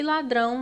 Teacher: nós temos que a sílaba mais forte é o Drão então é a última sílaba logo ela é uma oxítona então a sequência ficou um dois